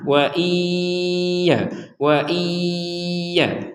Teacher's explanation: dimasukkan ke huruf ya sehingga menjadi wa iya Wa Iya Nah dari kata wa iya ini kita masukkan dengungan